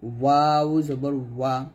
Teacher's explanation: বাটা 2 ঠোঁটের ভিজা অংশ থেকে মিলিয়ে উচ্চারণ করি, বা জবর বা। ওয়াওটা 2 ঠোঁট গোল করে উচ্চারণ করি, ওয়াও জবর ওয়া।